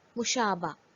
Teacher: In this case, Gol Hai is written but is not pronounced. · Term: Hay-e-Mukhtafi